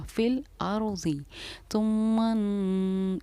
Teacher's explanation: इस मीम पर हमने गुन्ना किया क्योंकि नून या मीम पर तशदीद हो तो गुन्ना होता है